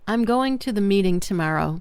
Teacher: Native speakers will naturally emphasize words like going, meeting, tomorrow. While words like to, the, and I'm almost disappear. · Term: sentence stress